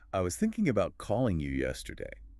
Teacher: Thinking, calling, yesterday. Those are the words carrying the core meaning. Yeah, they're louder, clearer, maybe slightly longer, even if you didn't quite catch the I was or the about or the you, clearly because they were unstressed and maybe reduced. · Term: stressed content words